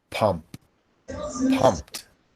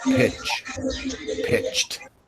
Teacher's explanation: When a whispered sound ends a root word, ED joins the word and a whispered T is heard.